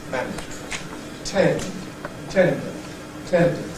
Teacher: the duration of the stressed vowel progressively gets less, as progressively more syllables are within the same stress unit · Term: Rhythmic Clipping